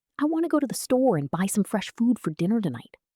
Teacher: want to becomes wanna, and and becomes nn, and the small words almost disappear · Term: American connected speech